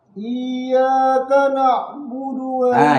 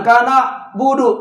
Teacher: Ain itu ada di tenggorokan, di wastul halq. Wastul halq itu artinya di tengah-tengah tenggorokan.